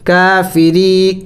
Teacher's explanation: را کو باریک پڑھنا ہے را کے نیچے زیر ہے